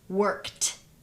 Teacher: the same thing goes for worked what's the base word work what's the final sound in work is that sound voiced or voiceless it's voiceless therefore ed is gonna sound like t · the reason why this ed sounds like t, which is voiceless, is because the final sound of the base word is also voiceless. The same thing goes for worked.